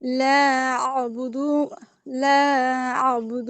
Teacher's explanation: দাল পেশ দু, এখানে টান নাই, আপনি টান দিছেন